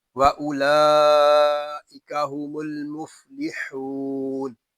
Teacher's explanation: آگے میم کو لام کے ساتھ ملا کر پڑھیں گے۔